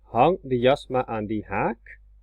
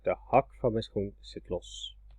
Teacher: First one is long. Hang de jas maar aan die haak. The second one is short.